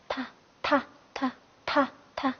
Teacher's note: 它的话发音部位也就是舌尖中 ，舌尖中。好，试着读一下踏。踏。好，那么它的发音方法呢？发音方法是送气清三音。对，送气清三音。好，那踏。好，一起读一下啊，